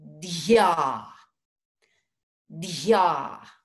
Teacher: that is a dental sound where the tongue comes to the front top teeth